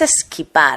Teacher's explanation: se le ha incorporado una epéntesis la e porque sabéis que los españoles no podemos pronunciar la s a principio de de palabras